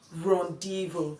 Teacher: the letter Z is not sounding in this word, and so it is produced as rendezvous.